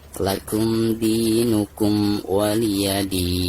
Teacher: Perhatikan ketika kita membaca din, maka di sini dihukumi mad adil sukun. Jadi dibacanya bisa 2 harakat, bisa 4 harakat dan bisa 6 harakat ya.